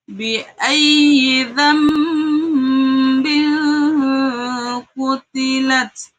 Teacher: Iklab adalah ketika nun sukun atau tanwin bertemu dengan ba. Adapun cara bacanya, suara nun sukun atau tanwin diubah menjadi suara mim.